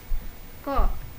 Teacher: Huruf qaf seperti kita mengucapkan huruf q dan tidak boleh disertai dengan nafas. Ko. Pangkal lidah merupakan bagian lidah yang ada di belakang, yang dekat dengan bagian tenggorokan.